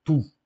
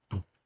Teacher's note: Realmente escreve-se como se fosse um ditongo, mas não é um ditongo, é uma vogal longa, é um U longo, só que você em grego, quando escreve o Y, lê como U, mas quando escreve Omicron Y, não é um ditongo, é um som U, como em francês.